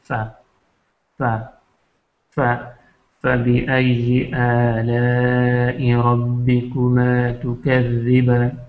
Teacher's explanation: اور یہ بھی کہ اندر کا جو وہ ہے نچلا جو ہونٹ ہے اس کے اندر کا حصہ اوپر کے ثنائے علیہ سے ٹکراتا ہے · ہمارا جو نچلا ہونٹ ہے یہ فا، یہ ثنائے علیہ سے اوپر کے دانتوں سے ٹکراتا ہے اور ایک اس کی آواز نکلتی ہے تھوڑی سی، لیکن زیادہ زور سے پھنکار کی جو آواز ہے وہ نہیں نکلتی، نارملی نرمی کے ساتھ یہ ادا ہوتا ہے.